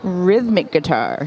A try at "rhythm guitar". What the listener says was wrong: Rhythm guitar. Rhythm, not rhythmic. No ICs here.